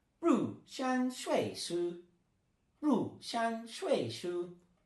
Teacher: So ru is fourth tone, shang is first tone